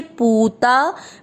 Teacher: प पे बड़े ऊ की मात्रा लंबा खींचेंगे